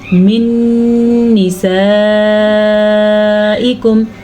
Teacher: نون ساکن کے بعد پھر نون آ گیا ہے جو کہ یمون میں سے ہے، تو یہاں پہ ادغام بالغنہ ہوگا